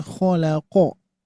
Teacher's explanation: Tinggal tadi qafnya Pak, qafnya agak tebal sedikit.